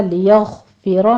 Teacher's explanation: لیغفر میں غین کو پر پڑھنا ہے